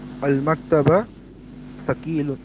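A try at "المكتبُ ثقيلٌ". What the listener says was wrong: नहीं देखिए गौर से देखिए, मकतबा नहीं है. पूरा लफ्ज़ बोलिए, आखिरी हरकत भी वाज़े करिए. नहीं आप बे को साकिन नहीं करिए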